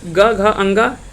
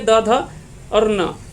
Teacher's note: तीसरा, चौथा और पांचवा, ये तीनों वर्ण को क्या क्या बोलेंगे, घोष बोलेंगे